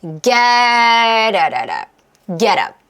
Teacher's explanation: t를 중심으로 해서 모음이 오잖아요. 이럴 때는 편안하게 리을 소리를 낼 수가 있어요.